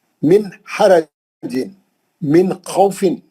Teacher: کہیں بھی نون کو نہیں کھینچنا، کہیں بھی نون لمبا نہیں کرنا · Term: اظہار